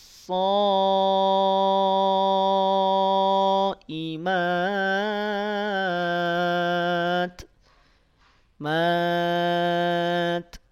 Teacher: tak sukun perhatikan ada percikan napas ya Ada sifat hamsnya dan dijaga Jangan sampai hilang